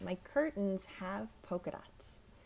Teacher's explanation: see the T almost disappears